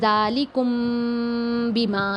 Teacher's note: میم ساکن کو ادا کرتے وقت دونوں ہونٹوں کے خشکی والے حصے کو بڑی نرمی سے ملا کر خشوم سے ایک الف کے برابر غنہ کر کے ساتھ ادا کیا جائے گا. پھر دونوں ہونٹ کے کھلنے سے پہلے ہی تری والے حصے کو سختی سے ملا کر با کو ادا کیا جائے گا. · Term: اخفا شفوی